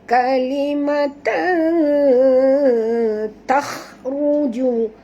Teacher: Jadi kita kena masukkan bunyi tanwin ini, sorokkan bunyi tanwin ini ke dalam huruf ta disertai dengung 2 harakat ya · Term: Ikhfa hakiki